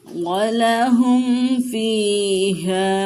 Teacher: میم کو ظاہر کر کے پڑھیں گے، فا کو کھینچ کے پڑھیں گے کہ یائے مدہ ہے، اور ہا کو کھینچ کے پڑھیں گے کہ الف مدہ ہے، اور یہاں پہ مد منفصل کا قاعدہ ہو رہا ہے۔ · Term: اظہار شفوی